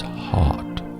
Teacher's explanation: To be respected, to attract positive energy in your life, you must always practice speech patterns that resemble more the California accent rather than the Midwest accent. Longer, more relaxed vowel sounds as opposed to the harsh, shrill, short vowel sounds of the Midwest.